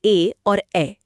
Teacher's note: ए और ऐ का उच्चारण गले और तालु दोनों की मदद से होता है। इसलिए यह कंठ तालव्य हैं।